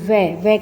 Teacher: व का जब हम उच्चारण करते हैं तो इसमें हमारे होठ भी काम आते हैं और दंत से भी स्पर्श होता है